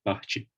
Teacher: I don't have to aspirate to make a distinction in Portuguese. But my Portuguese P is very close in its VOT to the English B.